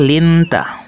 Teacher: dibaca Ya Allah kemudian lafal lintah hukum bacaannya adalah ikhfa sebab huruf nun sukun bertemu huruf ta cara membacanya adalah suara nun sukun dibaca samar disertai dengung